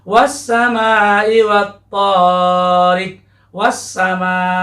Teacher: alif lamnya pada kata was-sama ini tidak dibaca jelas tetapi dilebur atau disatukan, diidghamkan